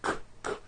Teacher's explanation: Q sounds are made with the K sound, k, k, and the W sound, w, put together.